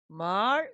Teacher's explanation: 처음은 낮게, 끝은 올리고 길게. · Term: 상성